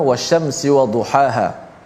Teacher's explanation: Yang pertama wasyamsi wadhuhaha, yang mana di sini ada huruf ha di hujung, wadhuhaha ada huruf ha yang berada di tengah halqum, dan ada huruf ha yang berada di pangkal halqum kita ataupun leher kita, yang mana dua-dua huruf ni huruf yang berdekatan pada makhraj.